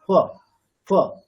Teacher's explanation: Just যে দুটো ওষ্ঠ পুরোপুরি স্পর্শ না করে একটা ফকার বলতে হবে, ওটাই আমাদের উপধ্বনীয় বা অর্ধেক ফকারের উচ্চারণ।